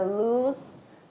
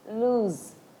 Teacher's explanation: essa segunda palavra, você fala com Z mais evidente, apesar de estar escrito com S